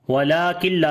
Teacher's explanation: نون ساکن کے بعد لام ہے، ادغام بغیر غنہ کے کریں گے ، وَلَٰكِن لا، لام کو لمبا کریں گے، الف مدہ ہے،